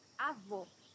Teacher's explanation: Here you have a closed O.